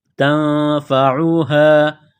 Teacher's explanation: یہ گول ہا ہے چشمہ والی، صرف منہ سے ہوا نکالنے کی طرح اس کو پڑھیں گے